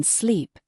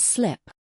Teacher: When you say sleep, the vowel sound is longer. It's like stretching. But when you say slip, the vowel sound is much quicker, sharper. It's subtle, but it changes the meaning.